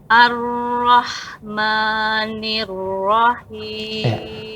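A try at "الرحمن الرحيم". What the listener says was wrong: Dibaca ma atau ma? Ma tipis ya, tipiskan bibir ya. Seluruh tipis dibaca tipis. Ya, wa harf isti'la'i kaidahnya wa raqiqan mustafilan min ahrufi. Dan tipiskan huruf istifal. Ya, ma, tipiskan bibirnya, buka pada harakat fathah. Ma. Ar-Rahman.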